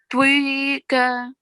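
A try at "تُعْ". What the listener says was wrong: Okay, but try not to make that W sound between the sound of the letter, okay? Tuika.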